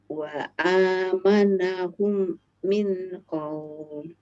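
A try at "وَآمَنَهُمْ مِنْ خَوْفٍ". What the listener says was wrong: Jangan diputus. Hum min. Baru min diputus boleh. Hum min. humnya lama. Humnya lama. Hum min khauf. Jadi tidak semua akhir kata diputus. Tapi kalau pas gunnah begini harus ditahan agak lama. Wa amanahum min baru putus ini izhar ya. Min khauf.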